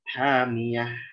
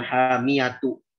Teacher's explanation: Di situ pertama tak marbutoh jadi ha, yang kedua tanwinnya hilang sama sekali. Gitu ya. Jadi bukan hamiyatu, tapi hamiyah. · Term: wakaf